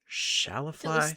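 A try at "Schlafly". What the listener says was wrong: You're putting the wrong emphasis on the wrong syllable.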